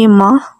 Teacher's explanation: they also say ma for the word my also with a short ah sound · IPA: [aə , a]